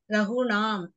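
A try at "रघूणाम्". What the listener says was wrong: நீங்க தீர்க்கமே நீட்டவே மாட்டேன். ரகுணாம் ரகுணாம் இல்ல ரகுணாம்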